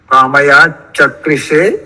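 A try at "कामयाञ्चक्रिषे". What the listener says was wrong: इधर है कामयान, कामयान चक्रिषे, अनुस्वार है बीच में।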